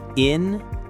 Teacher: Stress on the second syllable.